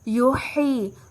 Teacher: ہا وسط حلق سے ادا ہوگا